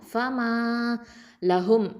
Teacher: ஃப ஃபதா ஃப, மீம் ஃபதா, அலிஃப் மத்து, மா 2 ஹரக்கத்தை நீட்டணும். ஃப அப்படிங்கிறது ஷஃபத்தான் உதடு எழுத்து, மீமும் ஷஃபத்தான் தான் உதடு எழுத்து. அதில் அலிஃப் மத்து வந்திருக்குது, 2 ஹரக்கத்தை நீட்டுவோம்.